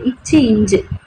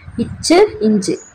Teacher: பண்ணுதுன்னா நடு அன்னத்தின் இடைப்பகுதியை தொடுது சோ இது ரெண்டுமே இடை இடை சோ நாவினோட இடைப்பகுதி அன்னத்தோட நடுப்பகுதியும் தொடுது